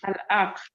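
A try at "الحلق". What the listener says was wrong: The second one, which you said, it seems like you're saying ayn instead of ha. So it is al-halaq. Al-halaq.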